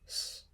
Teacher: this letter is Sigma Sigma and it makes a sh sound a retracted s sound uh kind of halfway between s and Sh